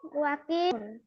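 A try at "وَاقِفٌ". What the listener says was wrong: ওয়াকি টান নাই, ইতে টান নাই, ওয়াকিফুন।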